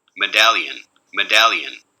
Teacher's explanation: there's voicing during the closure here you get this nice sharp burst and then almost immediately a vowel so no aspiration there